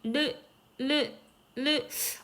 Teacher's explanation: 근데 치고 그냥 빠져버려. 마찰, 파찰 이런 걸 느끼기보다는 치고 빠지고 심지어 양볼 옆으로 바람이 훅 나가죠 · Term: 유음